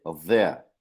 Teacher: जो द sound है वो भी डेंटल साउंड है हम ये नहीं कहते देयर वी से there.